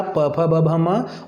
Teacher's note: बिना होठों की सहायता के आप इन्हें नहीं बोल सकते, चाहे ऊ बोलना हो, चाहे प बोलना हो, चाहे फ, चाहे ब, चाहे भ, चाहे म। आपको होंठ मिलेंगे और अलग होंगे तभी इनका उच्चारण हो पाएगा। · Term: होठों से